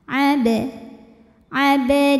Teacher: asli dan ada di tengah bacaan kita maka cara membacanya adalah kita pantulkan bnya ini dengan pantulan yang kecil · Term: Qalqalah Sugra